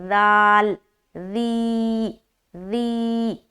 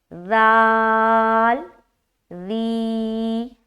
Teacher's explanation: آگے، الالذی، حمزہ زیر ای، لام لام زبر لل، الل، لام زبر لا، ذال یا زیر ذی، بہت ہی نرمی کے ساتھ ادا کرنا ہے بغیر سیٹی کے، سخت آواز نہیں آنی چاہیے ذال میں، ذال، ذی، ذی۔ زبان کا جو نوک ہے نا، اس کو ثنایا علیا کے کنارے پر لگا کر اس کو ادا کریں گے، ذال، ذی، اس طرح سے۔